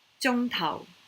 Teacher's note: Tao is a lower tone and the zhong, of course, is high.